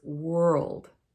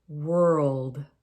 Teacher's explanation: It's sometimes easy to say it more like word, but they're very different. The world has that L in it, and we almost make it sound like 3 syllables. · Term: L sound